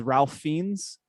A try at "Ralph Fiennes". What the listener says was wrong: His name ain't Ralph, honey. It's pronounced Rafe.